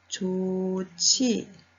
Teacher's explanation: 히읗과 지읒이 만나서 치읒이 되었습니다